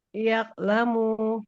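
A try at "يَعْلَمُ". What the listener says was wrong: Enggak boleh yaklamu. Kalau yaklamu nanti seperti kaf dia. Ya alamu. Nah, di ain sukun harus mengalir suaranya.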